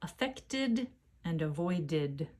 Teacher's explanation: affect ends with a T sound and void ends with a D sound I cannot add a second t or d without adding a vowel first so I add the sound I a voed vowel and then